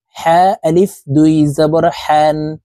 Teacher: হা হরফ হালুকের মধ্যখান থেকে উচ্চারণ করতে হবে কারণ হার মাখরাজ হালুকের মধ্যখান থেকে হবে